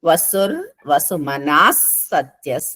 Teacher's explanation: ఎక్కడైనా సరే విసర్గల తర్వాత స వస్తే గనుక ఆ విసర్గలు వెళ్ళిపోయి పొల్లు స వస్తుంది